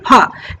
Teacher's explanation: इसमें दोनों होठ जो है चिपकता है और यहाँ से जो ध्वनि निकलती है फ।